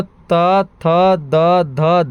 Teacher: दंत न इसलिए कहते हैं क्योंकि इसका उच्चारण कहां से होता है? दंत से।